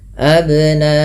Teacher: karena ada sifat yang melekat pada huruf ba yaitu qalqalah, yang dimana memantul ya bunyinya, maka tidak dibaca dengan abna'ahum tapi harus ada pantulan abna'ahum, tapi tidak pula dibaca dengan ab.